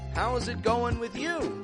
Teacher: Peaking up your tone on that with you.